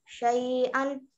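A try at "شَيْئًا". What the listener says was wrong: या साकिन से पहले जबर को लंबा नहीं करते हैं। शैअन।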